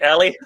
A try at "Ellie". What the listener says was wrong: Ellie. You said Ali. I'm not Ali. I'm not an alley cat. I'm Ellie.